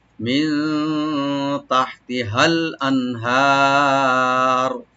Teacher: আল আনহার, হামজাকে রাইট দিয়ে নুন সাকিন এখানে আমরা জাহার করব, এখানে গুণা হবে না। আর হাটাকে রাইট দিয়ে একালিপ টানবো, আর রা একটু আমরা ডিপ করে পড়বো। আল আনহার মিলাই পড়লে মিন তাহতিহাল আনহার, সুবহানাল্লাহ।